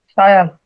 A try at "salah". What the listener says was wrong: Salah. Use L. Salah.